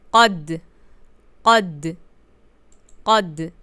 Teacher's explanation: I make a very little pause on the sokoon sound to show it and to avoid making it with fatha sound.